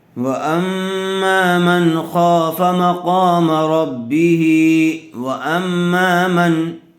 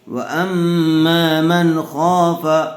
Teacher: نون ساکن کے بعد حروف حلقی میں سے خا آیا ہوا ہے، اس لیے بغیر غنّے کے جلد اظہار کر کے پڑھیں گے۔